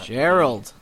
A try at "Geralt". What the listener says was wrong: Yeah, Geralt. And Geralt with a T.